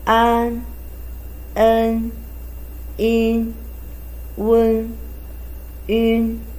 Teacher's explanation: I, A, V, Ao, O, U, Ye, Yue, The last group we call nasal finals. Actually, it's a combination of a vowel plus a nasal consonant, n.